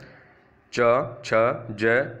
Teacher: तलव्य यानी जो तालू से बोले जाते हैं जीभ के तालू से बोले जाते हैं